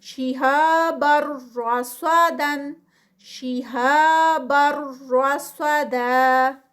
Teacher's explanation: صاد درمیان میں آ گیا ہے، ہیوی ہے، اور را بھی ہیوی ہے اور ساتھ میں ادغام ہے